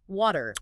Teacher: In American English, the T becomes very soft. It sounds almost like a D. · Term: flapping